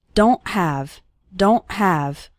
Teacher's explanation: it's more of a stop at the back of your throat the sound cuts off very suddenly · at the end of the word don't, we don't really pronounce the T strongly.